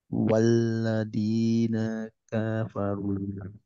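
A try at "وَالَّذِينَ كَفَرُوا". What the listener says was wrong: Nah, K-nya kepanjangan, hati-hati.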